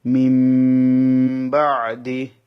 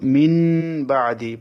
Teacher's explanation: নুন সাকিনের পরে বা এসেছে, সেজন্য নুনটা মিম হয়ে যাবে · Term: ইকলাব